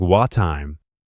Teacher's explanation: The two T sounds become one